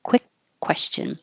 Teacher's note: and remember for quick question it looks like qu you but it's really a KW so you have to round your lips